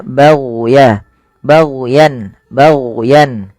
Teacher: hati-hati jangan sampai memantulkan huruf ghain. Karena huruf ghain bukan huruf mantul, tapi dia au, ya, baghya, baghyan.